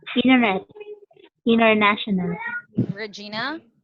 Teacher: the T sound is not there if it's between letter n the T is not there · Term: silent